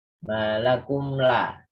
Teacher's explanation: Itu izhar syafawi ya. Jadi jelas dan tanpa dengung.